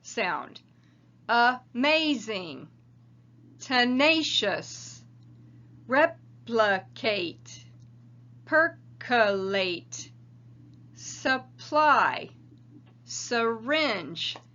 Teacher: a written a e i o u and even y coming out as that schwa sound